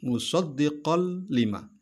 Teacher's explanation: Huruf lam tadi tidak dibaca dengung. Maka hukumnya disebut dengan hukum idgham bila gunnah, tanpa dengung.